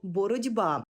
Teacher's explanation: пишемо з літерою Т боротися а вимовляємо і чуємо боротьба бо глухий ті уподібнився під впливом дзвінкого би до ді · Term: уподібненням